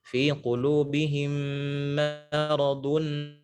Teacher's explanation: Hati-hati mimnya jangan tebal, bukan maradun.